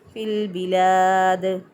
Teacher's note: دال ساکن اس پہ قلقلہ کریں گے